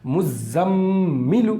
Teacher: میم پر تشدید ہے تو غنہ بھی کریں گے